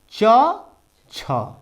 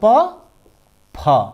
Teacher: प्रत्येक वर्ग का प्रथम और द्वितीय वर्ण क्या होंगे? अघोष होंगे।